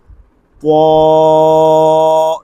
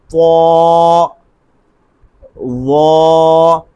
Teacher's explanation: طا یہ غلط ہو جائے گا، ضا یہ بھی غلط ہو جائے گا۔ بالکل ان کو لمبا نہیں کرنا، ایک الف کے برابر صرف لمبا کرنا ہے